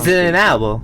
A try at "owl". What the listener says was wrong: Wait, why did you add two syllables on there?